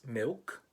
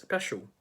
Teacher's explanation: in this accent the l sound is replaced with a w sound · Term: l vocalization